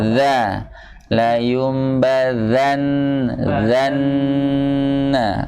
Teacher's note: di ujung lidah bertemu dengan ujung gigi seri atas